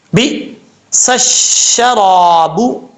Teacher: شین کا مخرج زبان کے درمیان اوپر والے تالو سے لگے تو شین پڑھا جاتا ہے